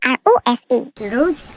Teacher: 그냥 입천장을 혀에 대지 않고 목구멍 안쪽으로 이렇게 당기면서 굴리는 소리가 납니다.